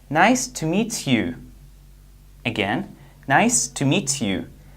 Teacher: When we have T sound plus Y sound, the result is Ch sound.